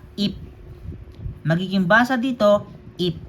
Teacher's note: P sound po pag nasa ilalim. So, wala na pong aspiration yung tunog